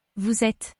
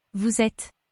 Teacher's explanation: You are, formal or plural, is Vous êtes. The S at the end of vous is heard this time because it's followed by a vowel, and the sound gets pulled to et, so the words run into each other.